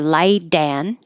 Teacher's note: The T can change to a D.